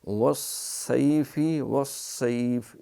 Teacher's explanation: تو اس میں صاد اس کی سیٹی موٹی، اگر باریک کریں گے والسیف تو وہ سین ہو جائے گا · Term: موٹی سیٹی